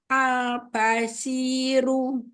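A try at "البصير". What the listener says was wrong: Ba-nya lebih syiddah, lebih jahar lagi. Al-basyiru.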